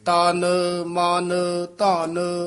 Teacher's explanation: ਤਨ ਮਨ ਧਨ ਤੇ ਮਮਾ ਤੇ ਨਨਾ ਹੈ ਹੀ ਅੱਧਾ ਨੱਕ ਚ ਬੋਲਦਾ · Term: ਨਾਸਕੀ